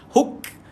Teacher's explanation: bila huruf kaf sukun, angin keluar sikit tuan-puan, okey, dan ada sifat hams tuan-tuan, angin dikeluarkan. Huk, dia ada KS.